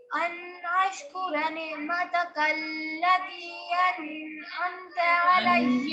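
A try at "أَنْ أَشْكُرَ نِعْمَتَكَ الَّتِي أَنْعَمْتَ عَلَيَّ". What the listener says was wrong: یہاں بھی ان نہیں کریں گے. یہاں بھی ان نہیں کریں گے. انعمت علیہ ایسے بولیں گے.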